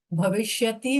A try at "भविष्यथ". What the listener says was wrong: जी. भविष्यथ ना कि भविष्यत. ओके.